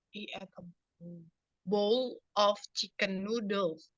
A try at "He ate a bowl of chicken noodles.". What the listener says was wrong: Ya. A bowl, ya, a bowl, ya benar.